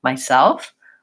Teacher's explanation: the word myself where we should stress the second syllable so it's short long myself I'll often hear people stress the first syllable myself instead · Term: syllable stress